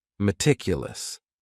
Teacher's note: That first syllable also has that schwa, that A sound, that reduced vowel sound.